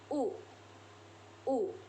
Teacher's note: Yang ketiga ada huruf U. Huruf U dibentuk dengan lidah yang berada di posisi tinggi dan belakang serta bibir yang membulat.